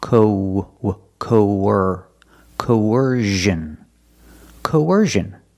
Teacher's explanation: When we link these two vowels, there's a sound in the middle. It's a w sound, like a W, linking the vowels.